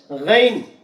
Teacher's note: वाऊ की आवाज नहीं आनी चाहिए